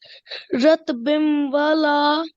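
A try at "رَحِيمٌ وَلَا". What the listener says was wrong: So just remember we need to hold for 2 seconds for our nasal sound. Ratbim wala.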